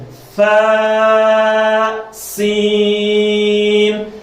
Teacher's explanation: فا جو ہے نرم حروف میں اور سین سیٹی والے حروف میں